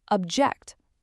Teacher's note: But if you shift that stress to the second syllable, you get object, a verb, the action of disagreeing. Same spelling, different music, completely different word.